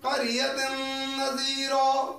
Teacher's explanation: تنوین کے بعد نون آ گیا ہے تو ہم جو ہے اس میں غنہ کریں گے، ادغام غنہ کے ساتھ کریں گے